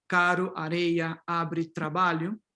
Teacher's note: In syllable initial position, R, yeah, you can have the flap